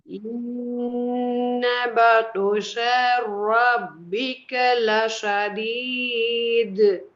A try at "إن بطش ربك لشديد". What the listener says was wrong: بطش. ரெண்டு நீட்டக்கூடாது, அந்த நீட்டுறது பிழை, குறைக்கணும். بطش. إن بطش. إن بطش.